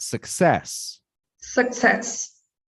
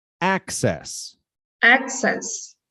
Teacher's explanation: the stressed syllable is the second one in the first word and the first one in the second word